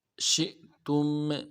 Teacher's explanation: شین تفشی واضح کریں گے، آگے شین کو حمزہ کے ساتھ ملانا ہے، حمزہ کے اوپر جزم ہے تو جھٹکا دیں گے۔